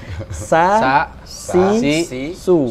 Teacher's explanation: Ujung lidah bertemu dengan belakang gigi seri bawah. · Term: Sin